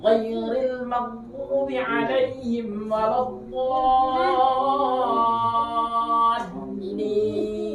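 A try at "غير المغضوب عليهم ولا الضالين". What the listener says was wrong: Nah, karena mau nebalin dot, akhirnya lamnya kepengaruh. Harusnya kan wala. Harusnya kan wala dot, tapi karena mau nebalin dot jadinya walot. Ghairil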